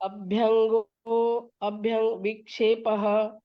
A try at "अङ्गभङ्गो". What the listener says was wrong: ऐसे नहीं है, अंग भंगो, अभ्यंगो नहीं, अंग भंगो, अंग विक्षेप।